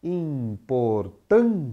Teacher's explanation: se a gente pensar só na palavra, a sílaba tônica está na penúltima sílaba. Ela é uma paroxítona.